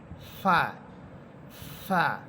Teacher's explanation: সামনের উপরের 2 দাঁতের অগ্রভাগ নিচে ঠোঁটের পেটের সাথে লাগবে, মাঝখানে লাগবে, এবং বাতাস বের করে দিয়ে পড়বেন। এই ফা হরফটা হচ্ছে বাতাস বের করে উচ্চারণ করতে হয়, ফা, ফা।